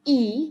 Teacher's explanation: For instance, in E, the phoneme E here, I know that the tongue position should be at the front and at a high position in order to produce this phoneme